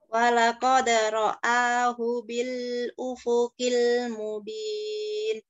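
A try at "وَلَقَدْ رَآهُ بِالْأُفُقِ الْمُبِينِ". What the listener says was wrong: Iya, cuma hati-hati lamnya ya. Sekali lagi coba. Jangan terlalu lama.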